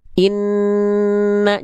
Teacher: karena suaranya itu ada masuk ke hidung dulu ketika kita melafalkan nun bertasydid, maka ketika kita melafalkan en dari sini dari lidah en kan masuk hidung. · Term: dengung